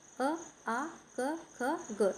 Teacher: कंठ वर्ण हो जाएंगे हमारे अ आ क ख ग जिसको हम गले के माध्यम से बोलते हैं।